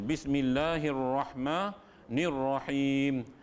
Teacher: Ar-ra itu bertebal, ra tebal, ra tafkhim.